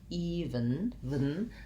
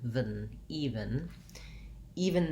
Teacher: So it sounds like even, vn. So I go almost right from that V into the N